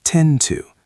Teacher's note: the d and the t blend together slightly